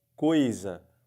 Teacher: a palavra fica igualzinho tapando ou não o nariz porque porque não sai som pelo nariz o ditongo é sua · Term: ditongo oral